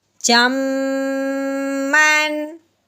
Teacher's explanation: میم کے اوپر تنوین آگے غین اور فعل کی میں سے ہے، اس لیے تنوین پہ غنہ نہیں کریں گے